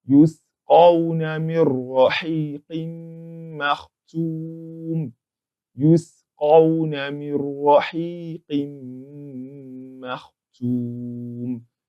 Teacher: If we look at this Nuun Saakinah, and the letter after it is a letter Ra, which is the letter of idgham bighayri gunnah, that explains why we pronounce this as though there is no Nuun there in the first place, because the Nuun is completely entered into the Ra